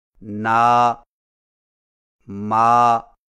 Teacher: نون و میم کے کھڑے زبر کو پڑھتے وقت ہاں کی طرح ناک میں آواز نہ لے جائیں، لہذا نا، ما کو اس طرح ناک میں پڑھنا، نو، ما غلط طریقہ ہے۔